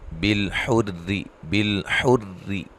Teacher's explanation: یہ لام کو ہلانا نہیں ہے اور را کو باریک ادا کرنا ہے